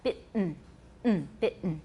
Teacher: In both British and American, the T in bitten is accompanied by a glottal stop.